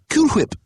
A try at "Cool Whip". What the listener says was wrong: Cool Whip. You're saying it weird. Why are you putting so much emphasis on the H? Say whip. Now say Cool Whip. Cool Whip. Cool Whip.